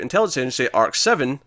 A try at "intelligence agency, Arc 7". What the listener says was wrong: You're putting in a pause where it doesn't need to be.